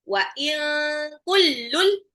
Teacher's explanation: tanwin ketemu lam itu adalah idgham bila gunnah